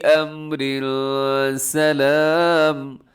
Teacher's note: من کلی امر سلام، امر، یہاں اخفا ہو رہا ہے، تنوین کے بعد سین آ رہا ہے، تو اگر وقف نہیں کریں گے تو یہاں پر آگے اخفا کر کے پڑھیں گے